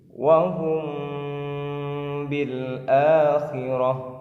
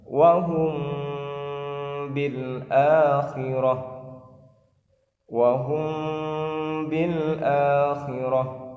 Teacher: Jadi dibaca samar serta dengung, ditahan selama satu alif, dan caranya bibir kita agak direnggangkan sedikit, jangan terlalu rapat. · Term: ikhfa syafawi